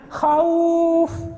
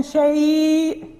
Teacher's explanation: إذا انفتح ما قبلها صارت حرف لين، يعني فيها شيء مد من نوع آخر يسمى مد اللين